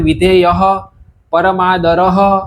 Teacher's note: વિસર્ગ પ અને ફ નું સ્થાન હોસ્ટ હોવાથી હોઠ હોવાથી થી આ વિસર્ગ હોઠ પર આવીને બેસી જાય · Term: ઉપદમાનીય વિસર્ગ